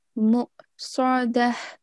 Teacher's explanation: it should be pronounced with a soft jerk, okay, from the bottom of the throat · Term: Hamza Sakin